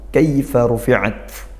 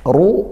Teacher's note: Kaifa ruat ru rnya tebal tafkhim karena dia dommah. Ro dommah kita baca tebal pangkal lidah dinaikkan.